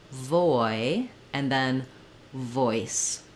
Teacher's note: drag out the vowel a little bit to get that oi sound in there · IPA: /ɔɪ/